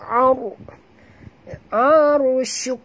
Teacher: arusuk ra mati huruf sebelumnya, baris atas kena baca tebal